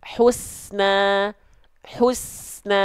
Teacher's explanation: pastikan bunyi e apa desisan esnya itu jangan berhenti ya Hus sampai nanya keluar esnya terus jalan ya Husna Husna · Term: Sin sukun